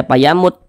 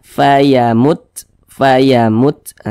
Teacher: huruf ini dia memiliki sifat Hames jadi ketika Kita mengucapkannya itu ada nafas yang mengalir sehingga tidak dibaca payamut tidak Mut mutnya itu ada aliran nafasnya